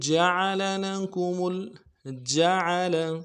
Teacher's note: جیم کو واضح کریں گے، عین کو بھی موٹا ادا کریں گے، لام کو بھی واضح کریں گے، زبر ہیں تینوں کو برابر نرمی سے کھینچیں گے.